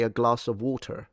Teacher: If you've ever heard a Bristol accent, little rural, they have an English accent, but they pronounce the R